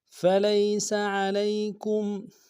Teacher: فَلَيْسَ عَلَيْكُمْ، فلیس میں لام کو یا کے سامنے لانا ہے، یا لین بغیر کھینچے پڑھیں گے، سین کی سیٹی باریک ہوگی۔ فلیس علیکم، عین کو گہرائی سے ادا کریں گے، لام کو یا کے سامنے لانا ہے، یا لین بغیر کھینچے پڑھیں گے، کاف کو میم ساکن کے سامنے لانا ہے، میم ساکن میں غنہ کریں گے۔